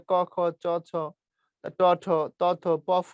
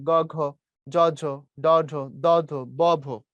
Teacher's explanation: প্রথম গুলো উচ্চারণ করলে ক খ চ ছ ট ঠ ত থ প ফ, গলা কম কাঁপে। পরের গুলোতে গলা বেশি কাঁপে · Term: ঘোষ